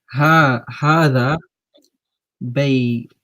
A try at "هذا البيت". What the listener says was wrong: See, I'm not hearing the alif and the lam. I'm not hearing هذا البيت.